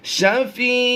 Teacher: یا مدہ کے بعد سکون عارضی وقف کی وجہ سے دو زیر کو ہم نے جزم سے کنورٹ کرنا ہے، تو یہ لفظ بنے گا شفیع، یعنی ہم نے یا مدہ جو ایک الف کھینچنا تھا سکون عارضی کی وجہ سے مد عارض کرتے ہوئے ہم نے اس کو کم سے کم دو الف کھینچ کر پڑھنا ہے